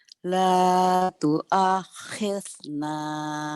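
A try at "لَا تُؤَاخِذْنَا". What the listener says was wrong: Masih kedengaran sama saya telinganya ya Bu. la tu'akhirna. La tu'akhirna. La tu'akhirna.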